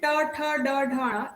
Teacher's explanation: So when we say ta, tha, da, dha, na, your tongue touches the part of your mouth that is on the upper side behind your teeth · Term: murdhanya